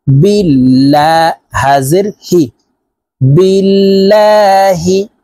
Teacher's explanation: আল্লাহ শব্দের আগের হরফে জের আছে তাই এই লামকে লা অর্থাৎ পাতলা ভাবে পড়তে হবে